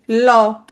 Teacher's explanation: ল উচ্চারণের সময় জিভের পাশ দিয়ে কিছু বাতাস বের হয়ে যায় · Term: পার্শ্বিক ধ্বনি